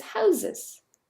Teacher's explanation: And the plural of house is houses. Here there's a schwa that's part of the plural S.